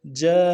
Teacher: جیم کے ساتھ الف مدہ ہے، مد اصلی ہے، تین الف اندر میں کھینچیں گے ، جا، نون کے اوپر تنوین ہے، تشدید زور دیں گے،